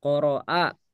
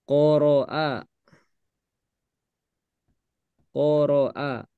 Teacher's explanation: huruf ro dibaca tebal ketika harakat fathah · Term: tafkhim